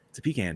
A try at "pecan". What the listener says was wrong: No, you do not say con. Listen, con is C-O-N. Can is C-A-N.